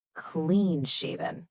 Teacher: Notice that heavy stress right on clean.